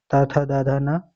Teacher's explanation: त वर्ग त थ द ध न का उच्चारण स्थान दंत है। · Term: दंत ध्वनियां